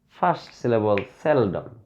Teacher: We should emphasize or we should stress on the first syllable. Sell. First syllable, seldom.